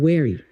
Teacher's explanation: E V e o W às vezes se confundem, então very pode soar como wary.